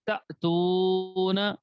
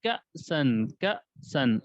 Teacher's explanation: حمزہ ساکنہ کو جھٹکے کے ساتھ پڑھیں گے